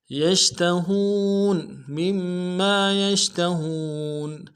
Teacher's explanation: یا کو شین کے ساتھ ملانا ہے، شین کو واضح کریں گے ، اور ہا کو واو کے ساتھ ملانا ہے، واو مدہ